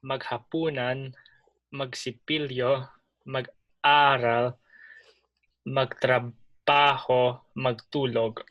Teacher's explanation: Put the stress on the second to the last syllable.